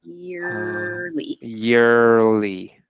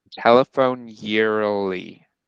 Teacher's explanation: the R can get swallowed up into the L because they're in the same place of articulation. There's so many sounds in this one spot in English, this alveolar ridge right here.